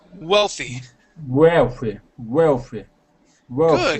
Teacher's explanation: with the W, instead of saying wealthy, pronouncing a V, we want to pronounce an oo sound, saying oo healthy, wealthy, wealthy.